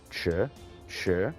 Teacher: that's going from low to high, so that one is the second tone